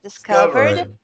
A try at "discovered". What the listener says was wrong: Sem esse E. Esse E não tá aqui, ó.